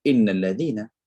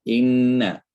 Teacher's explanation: Jangan baca innalladzina, baca inna, sebab ada gunnah di situ